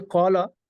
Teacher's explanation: الف سے پہلے زبر آ گئی تو الف پر پڑھا جائے گا